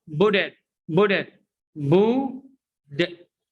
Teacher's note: T letter here is pronounced D. Why? Because it's preceded by a vowel and followed by a vowel. مسبوق بحرف متحرك أو متبوع بحرف متحرك حتى لو في بداية الكلمة التي تلي.